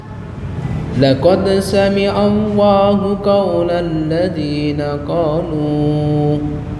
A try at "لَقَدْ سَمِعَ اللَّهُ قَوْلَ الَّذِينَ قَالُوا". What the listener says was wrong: Nah, kalau berhenti hanya 2 harokat. Jangan dipanjangin. Laqad sami'a Allahu qawlan ladzina qalu. Cukup 2 harokat. Jangan panjang. Bukan qawlan ladzina qalu. Nah, itu kurang pas.